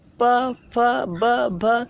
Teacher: प वर्ग पूरा ओष्ठ होता है, प, फ, ब, भ। इसमें सिर्फ आपके ओठों का रोल होता है। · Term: ओष्ठ व्यंजन